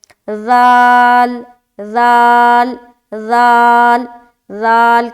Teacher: اس میں بھی سیٹی کی آواز نہیں آئے گی، زال بہت ہی نرمی کے ساتھ ادا کریں گے